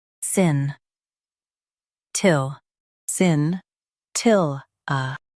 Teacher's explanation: Emphasize til and soften a.